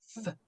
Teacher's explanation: C'est un, comment dire, c'est comme une sorte d'interdental, sauf que vos incisives vont venir toucher vos lèvres